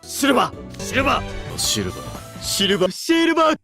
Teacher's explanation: Words that end in R are often changed to end in an ah sound, like silver.